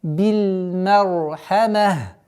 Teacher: Ха, мим. И при остановке кесра аннулируется. Та марбута переходит в звук ха.